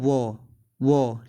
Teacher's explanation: दंत से भी बोला जाता है और ओष्ठ से भी बोला जाता है। मतलब कहने का मतलब है कि दंत और ओष्ठ में दोनों में प्रभाव पड़ेगा जब आप वो बोलेंगे, ठीक है, वो, ठीक है।